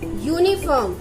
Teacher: Though it is starting with a vowel, but the sound of a consonant Y is coming.